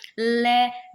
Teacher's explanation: उसमें सांस जीभ के दोनों पारश्व से निकलती है। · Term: पार्श्विक व्यंजन